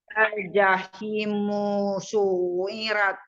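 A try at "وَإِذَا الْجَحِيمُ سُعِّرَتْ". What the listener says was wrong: Ingat-ingat panjang setelah hi baru musuh.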